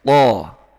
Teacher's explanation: karena dia hurufnya sifat isti'la, sehingga pangkalnya yang belakang naik, pangkal lidahnya naik